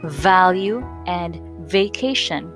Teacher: notice that your vocal cords vibrate as the sound is produced · First off, we put the lower edge of the upper set of teeth on the inner side of the lower lip. Secondly, release air between the upper set of teeth and the lower lip. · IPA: [v]